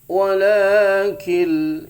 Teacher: idgham bila gunnah, tidak pakai dengung ya, nun sukun bertemu lam